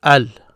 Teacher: you hear me pronounce the L because this is one of the moon letters, this M here, meaning the L of the definite article is pronounced with it.